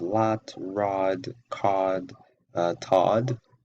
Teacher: words like lot and rod are pronounced with an unrounded vowel. So we have unrounded vowels here.